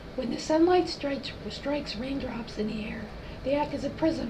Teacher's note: into many beautiful colors this is a patient with unilateral paralysis is pretty typical breathy dysphonia with some diplophonia